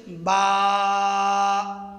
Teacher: উভয় টুটের বিজা অংশ থেকে উচ্চারিত হবে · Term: হরফে শাফাবিয়া